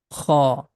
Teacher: This sound is coming out from the beginning of the throat.